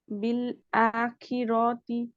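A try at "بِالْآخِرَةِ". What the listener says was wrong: Give it 2 count. Proper 2 count. Don't say ki. Say khi. आप इसको निकाल रही काफ के मखरज से, ये पीछे है काफ से। खी।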